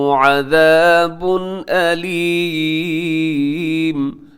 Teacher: تنوین ہے عذاب کے اوپر، اور تنوین کے بعد علیم کے شروع میں حمزہ ہے، یہاں بھی اظہار حلقی ہوگا